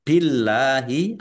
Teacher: Allahnya dibaca tipis Karena harakat di depannya kasrah. Billahi lam fathah berdiri mad thobi'i panjang dua harakat.